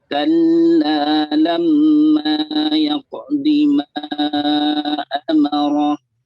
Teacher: Ma amarah. 4 harokat paling tidak.